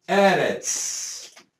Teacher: A tonicidade está aqui. Então, a sílaba tônica é a primeira e não a última.